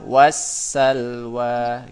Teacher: Rumusnya karena ada al bertemu dengan huruf sin, ya, huruf syamsiyah yaitu huruf sin. Cara bacanya huruf lam sukun dimasukkan kepada huruf syamsiyahnya, kepada huruf sinnya ditandai dengan tasdid. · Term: idgham syamsi